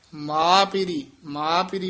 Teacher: ਮਾਂ ਨਹੀਂ ਕਹਿਣਾ ਨਾਸਕੀ ਨਹੀਂ ਬੋਲਣਾ